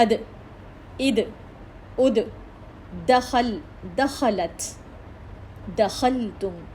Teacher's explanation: دال اپنے مخرج کو ٹچ کر رہی ہے، لیکن اس میں ایک پریشر ہمیں محسوس ہو رہا ہے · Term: کلکلا